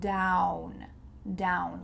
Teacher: Make sure that you slide into that W sound.